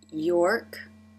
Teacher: The R is at the end of the syllable here, so the lips are more relaxed.